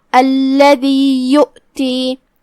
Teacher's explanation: کلمت یؤتی میں یہاں حمزہ ہے, حمزہ کی ادائیگی حلق کے نیچے والے حصے سے ہے تو ہم اسے وہیں سے پڑھیں گے.